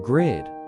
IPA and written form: ɡrɪd (Grid)